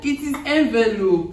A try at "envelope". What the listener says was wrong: Envelope. No, you see, you are pronouncing according to the spell. How did it become envelope?